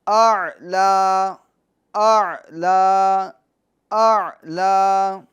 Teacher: پہلے حمزہ پھر عین، پہلے سے عین نہیں نکالیں، پہلے حمزہ پھر عین